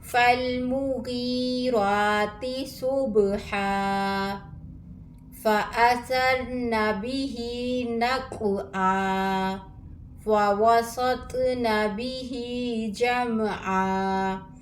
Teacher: دو زبر کو ایک الف میں بدل کر پڑھیں گے وقف کی صورت میں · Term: وقف بالابدال